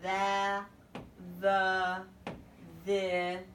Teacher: So the first TH sound is the neck vibrates. You stick your tongue out, there's a little bit of air